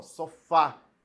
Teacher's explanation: Olha só, sofá. A sílaba tônica é a última, é a mais forte